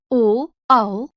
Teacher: कंठोस्थ्य गले और होठ से